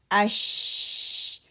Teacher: देखिए शीन लेटर है ना, शीन लेटर के लिए क्या है, मिडल पार्ट ऑफ माय टंग जो है, ज़बान का मिडल वाला हिस्सा ऊपर हार्ड पैलेट को साथ लगता नहीं है, ऊपर उठने से अदा होता है